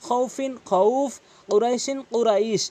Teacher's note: লিনের হরফের বামের হরফে যখন থামা হয় তখন তখন এই মধ্যলিন এক আলিফ করে টেনে পড়তে হয়।